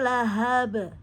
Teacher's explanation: itu qasar dibaca pendek semua nih enggak ada mad thobii di sini